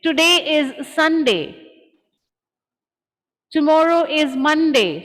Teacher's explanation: So when I make statements, I use a falling pitch.